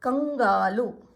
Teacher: ಅನುಸ್ವಾರ ಅಕ್ಷರದ ಮುಂದಿನ ಅಕ್ಷರ ಗ ಇದೆ. ಹಾಗಾಗಿ ಇದು ङ ಆಗುತ್ತೆ